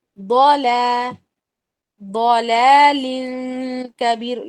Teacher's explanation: اللہ فی، پھر ضلال کبیر. لام کو تھوڑا لمبا کریں گے، ضاد کے بعد جو لام آیا اس کو الف کے ساتھ ملایا ہے